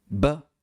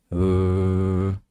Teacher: La única diferencia era que la B se pronunciaba con un cierre completo y la V sin un cierre completo. Era B versus pero esta pequeña diferencia estaba en proceso de desaparecer.